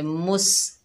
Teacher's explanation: सीन जो है सख्ती और सीटी वाला हरूफ है